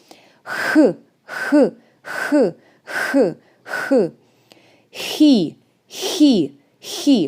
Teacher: your tongue makes stronger friction it goes more up